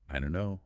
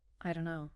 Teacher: The don't and no merge with the T and don't often dropped or softened to connect to no. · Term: linking